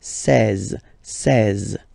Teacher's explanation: E and E together, they give you the sound E, really open.